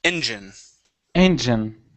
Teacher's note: Let's go to engine. So stress at the very beginning.